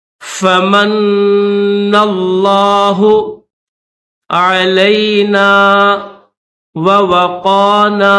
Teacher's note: فمن، فا زبر فا، میم کو نون کے ساتھ ملائیں گے، میم نون زبر من، نون لام زبر نل، لام کھڑا زبر لا، میم کو نون کے ساتھ ملائیں گے، نون کے اوپر تشدید ہے تو نون کے اوپر غنہ کریں گے، پھر یہ جو نون ہے اس کو لفظ اللہ کے لام کے ساتھ ملائیں گے۔